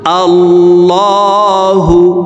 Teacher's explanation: আল্লাহু, এই লামকে ল বলে পড়তে হবে, কারণ আল্লাহ শব্দের আগের হরফে জবর অথবা পেশ হইলে এই লামকে ল অর্থাৎ মোটা করিয়া পড়িতে হয়। তো এখানে দেখুন আল্লাহ শব্দের আগের হরফে জবর আছে, এই কারণে এই লামকে ল বলে পড়ব।